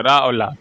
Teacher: रा वत्सर्य होता है, रा और ला